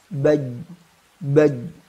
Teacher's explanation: kita tidak menjumpai aliran udara ya Maka langsung saja huruf Jim memiliki sifat jahr